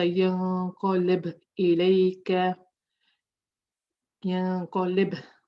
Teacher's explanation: I'm making Qalqalah, but it's not so strong.